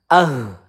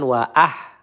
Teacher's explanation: Wa perhatikan di sini ha ya makhrajnya pangkal tenggorokan.